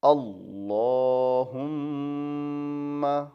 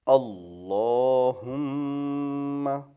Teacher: اللہ کے اندر لام کو موٹا پڑھا جاتا ہے، اللہم، اور سیم میم چونکہ مشدد ہے اس لیے یہاں غنہ ہوگا۔